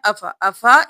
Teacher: کیا افا، افا ام نہیں کرنا، أَفَإِن مِتَّ ان نہیں کرنا، حمزہ کو میم کے ساتھ ملانا ہے، نون کو چھوڑ دینا ہے، میم پر تشدید ہے غنہ بھی کریں